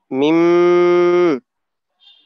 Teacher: হ্যাঁ মিম নাকে থাকবে আর কি। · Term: গুন্না